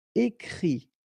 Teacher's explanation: And then the IT, phonetically you pronounce I because final T is not pronounced